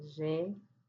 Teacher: Contando de direita para a esquerda, nós temos a última oxítona, a segunda paroxítona. O que está acentuada é a antepenúltima. Ela é uma proparoxítona.